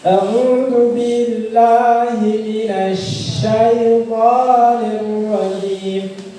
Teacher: sempurnanya huruf shin itu ketika udara menyebar di dalam mulut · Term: menyebarnya udara